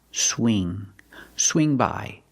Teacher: When you say swing, use the long E sound like green beans. Whenever you have ing, make the long E sound.